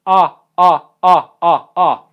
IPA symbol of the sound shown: a